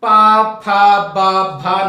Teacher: अब आप देखेंगे बिना ओठों को जोड़े आप पा, फा, बा, भा नहीं बोल सकते हैं। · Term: ओष्ठ